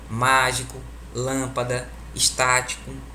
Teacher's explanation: E existe as proparoxítonas. A tonicidade recai na antepenúltima sílaba.